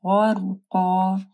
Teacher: غین کو موٹا پڑھنا ہے، را ساکن ہے، اس سے پہلے غین کے اوپر زبر ہے تو را بھی موٹی پڑی جائے گی.